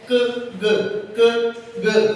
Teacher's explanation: velar sound इसमें हमारी back of the tongue soft palate के साथ जाके टच होती है और साउंड प्रोड्यूस होती है